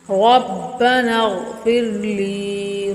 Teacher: را پر پڑھیں گے، غین بھی پر یعنی موٹا پڑھیں گے